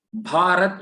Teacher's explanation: भारत उच्चारण करना है तो यहाँ पे भा क्या है? महाप्राण ध्वनि है।